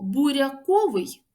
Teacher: нема роздільної вимови р м'який буква я позначає звук а